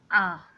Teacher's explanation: उच्चारण में जिह्वा मध्य में स्थित होती है और मुख विवर पूरा खुला रहता है